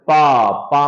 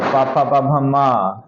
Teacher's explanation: पवर्ग का उच्चारण जैसे पा में देखते ना होठ सट जाता है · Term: ओष्ठ